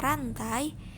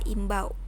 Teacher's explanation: Diftong menurut Kamus Besar Bahasa Indonesia adalah bunyi vokal rangkap yang tergolong dalam satu suku kata, seperti ai dalam kata rantai dan au dalam kata imbau.